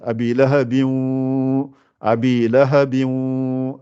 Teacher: Reste deux temps en préparant le waw qui sort avec les lèvres arrondies. Et il y a une bonne partie qui sort par le nez.